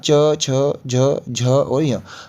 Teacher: इनके उच्चारण में जो आपकी जीभ होगी ना वो आपके मुख के ऊपरी हिस्से यानी कि तालू से टच होगी